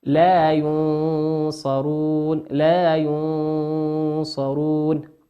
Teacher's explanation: وكلمة ينصرون النون في كلمة ينصرون هي نون ساكنة أتى بعدها حرف الصاد، والصاد من حروف الإخفاء